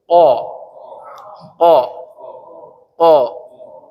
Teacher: itu aqsal lisan lidah yang paling dalam. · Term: qaf